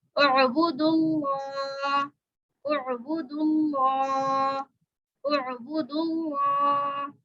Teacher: लाम खड़ा ज़बर ला, खड़ा ज़बर है उसको एक अलिफ के बराबर खींचा जाएगा